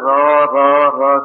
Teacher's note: रा का उच्चारण होता है मूर्धा से, सिर पर जोर पड़ता है